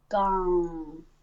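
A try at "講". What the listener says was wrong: I'm hearing NG again, so make sure the back of your tongue isn't getting tight It's just staying relaxed, and the front of your tongue is doing the lifting this time. Gone.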